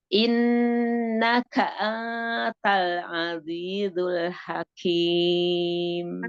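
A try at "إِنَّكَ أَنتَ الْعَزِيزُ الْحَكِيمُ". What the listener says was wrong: jangan ang kan dia jadi anta jangan ang tapi an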